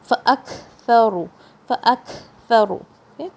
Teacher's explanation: کاف کے ساؤنڈ میں شدہ اور ہمس دونوں کی صفت ہے، یعنی ایئر فوراً ساؤنڈ فوراً رک جائے گی. فاک ساؤنڈ رک گئی اور ایئر فلو ہوئی.